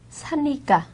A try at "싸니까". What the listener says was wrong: 싸니까. 참 저에게는 사니까로 들려요 지금. 싸다 하면 싸니까죠.